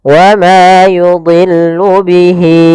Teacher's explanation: Maka kita panjangkan. Untuk panjang hi-nya adalah 4 harokat. Wa ma yudhillu bihi, ya 4 harokat baru pindah ke i. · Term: mad silah tawilah